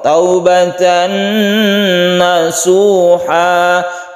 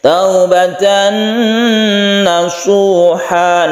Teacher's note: tanwin bertemu dengan nun kita sebut dengan idgham bi gunnah, kita panjangkan, kita dengungkan. Ketika kita membaca taubatan ini kita tahan, maka itu artinya idgham bi gunnah.